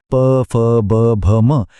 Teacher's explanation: ज्याचा उच्चार करताना ओठ एकमेकांना चिकटतात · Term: ओष्ठय व्यंजन